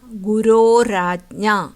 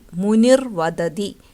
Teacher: ഇനി വിസർഗം ർ അല്ലെങ്കിൽ ര ആകുന്ന സന്ദർഭങ്ങൾ, ആ ആ ഒഴികെയുള്ള സ്വരങ്ങൾക്ക് ശേഷം വിസർഗം വരികയും അതിനുശേഷം ഏതെങ്കിലും സ്വരമോ മൃദുവ്യഞ്ജനമോ വന്നാൽ വിസർഗം ര അല്ലെങ്കിൽ ർ ആയി മാറുന്നു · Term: ഋത്വസന്ധി